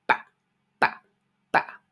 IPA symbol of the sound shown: b